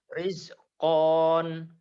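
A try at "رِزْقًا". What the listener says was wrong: Jangan ditahan kalau dibaca apa adanya. Rizkon.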